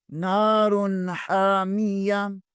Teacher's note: حرف حلقی میں سے ہیں، دو پیش کو تنوین کہتے ہیں، تنوین کے بعد حا حرف حلقی میں سے ہے، یہاں غنہ نہیں اظہار ہوگا